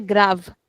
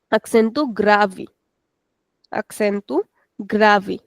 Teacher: if we have an e at the end of the word then in European Portuguese we don't pronounce it at the end.